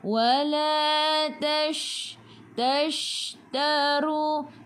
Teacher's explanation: Huruf shin. Sifat hurufnya tafashi. Kena hambur.